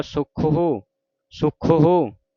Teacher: ਜੇ ਇਥੇ ਹੋੜਾ ਪਾ ਦਈਏ ਔਕੜ ਕਟਿਆ ਜਾਵੇ ਹਾਹੇ ਨੂੰ ਹੋੜਾ ਹੋ ਜੇ ਫਿਰ ਲਮਕਾ ਕੇ ਉਚਾਰਨ ਹੋਵੇਗਾ ਸੁਖਹੋ ਸੁਖਹੋ ਇਸ ਤਰ੍ਹਾਂ ਜੇ ਔਂਕੜ ਹੈ ਫਿਰ ਸੁਖਹੋ ਜਲਦੀ ਦੇ